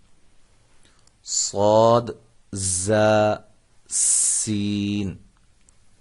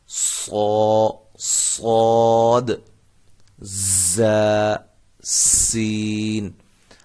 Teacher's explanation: ان تینوں حروف میں سیٹی کی آواز پیدا ہوتی ہے۔ اب فرق یہ ہے کہ صاد کی جو سیٹی ہے یہ موٹی ہوگی، زا اور سین ان کی سیٹیاں جو ہیں وہ سیٹی کی جو آواز ہے وہ باریک ہوگی۔